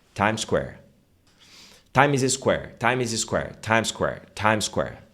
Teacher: Quando você fala Times Square, é uma coisa só. É um bloco só. O som é uma coisa só.